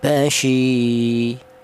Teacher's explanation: maka huruf shin ini dipanjangkan dua ketukan atau dua harokat, basyi ya. Kalau satu harokat pendek basyi, kalau dua ketukan panjang atau dua harokat panjang, basyi, seperti itu. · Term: matobi'i